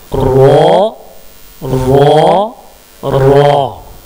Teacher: जुबान को गोल करके ऊपर के सामने के दांत की जड़ में सटाएंगे तो रा निकलेगा।